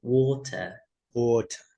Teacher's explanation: And then in British, R are being omitted